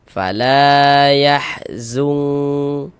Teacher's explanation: Nah, ini karena dia memiliki tanda baca fathah dibaca panjang la-nya. Mad tabi'i panjang 2 harokat.